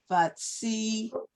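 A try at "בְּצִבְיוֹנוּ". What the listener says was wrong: Wait. Stop. You're saying ba. b b b. Just the. It's just the sound of it. B b.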